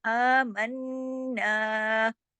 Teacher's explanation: आमन्ना, आमन्ना, इसको अमन्ना नहीं, आमन्ना, क्योंकि देखिए ऊपर खड़ी ज़बर भी है। मन्ना, अब यहाँ गुन्ना होगा क्योंकि नून पे तशदीद है, नून पे 2 नून हैं, तो तशदीद बता रही है ना कि 2 नून है, तो आमन और फिर ना, सख्ती से जोड़ेंगे, आमन्ना, पूरा हक अदा करेंगे।